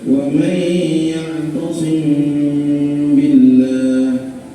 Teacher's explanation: Bila huruf mim bertemu dengan huruf ba, nah maka bunyi m pada huruf mim itu diucapkan secara samar-samar dengan mendengung kedua bibir terkatup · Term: ikhfa syafawi